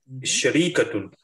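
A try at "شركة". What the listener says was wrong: There is no ya. No, there is no. There is no ya. If you say shari, then there is a ya, right?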